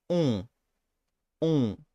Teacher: in French, it's just the O that is nasalized